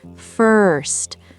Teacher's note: Focus on that American R sound. Your tongue pulls back.